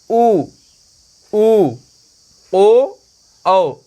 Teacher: तो इसमें वृत्त यानी होंठ जो है गोलाकार हो जाते हैं, इसीलिए इन्हें वृत्तमुखी कहलाते हैं।